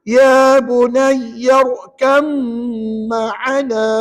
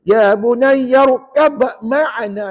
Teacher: Kat mana bunyi dengungnya? Pada mim yang sabdu. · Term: idgham kamil